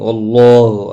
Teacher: واللہ، اللہ کلام زبر کی وجہ سے پر پڑا جائے گا، و الف مدہ ہے، ایک الف کی مقدار کے برابر کھینچ کر پڑھیں گے